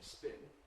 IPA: spɪn